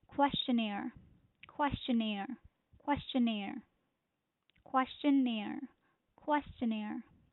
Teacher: the stress is on the last syllable